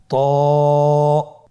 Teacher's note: এটা উচ্চারণের সময় অবশ্যই মোটা করতে হবে এবং উচ্চারণ করার সময় এক আলিফ টেনে পড়তে হবে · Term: মোটা হরফ